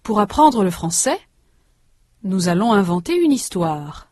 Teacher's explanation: There is a slight pause between français and nous. There is a tonic stress on the last syllable of each rhythmic group, on c'est and on toir.